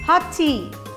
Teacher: When we use this phrase in a sentence, the two t sounds join together and become one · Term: linking sounds